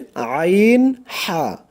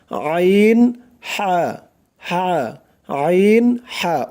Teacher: কিভাবে করতে হবে গলা চিপে মানে গলার মাঝখান থেকে গলা চিপে উচ্চারণ করতে হবে